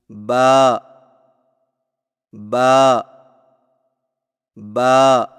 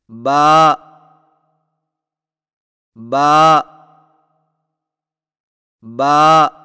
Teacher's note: با کی ادائیگی میں ہونٹوں کے گیلے حصے کو سختی سے ملا کر باریک آواز میں پڑھیں